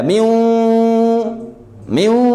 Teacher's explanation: Jadi seakan-akan kita mengucapkan 2 huruf. Huruf wawu dan huruf nun, tapi nunnya pengucapannya tidak sempurna karena makhrajnya tidak menempel ya. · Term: idgham nakis